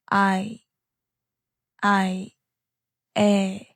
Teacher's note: Your mouth starts open like you're saying a, and then it moves slightly toward e. So when you blend them together, it becomes 에, I, 에.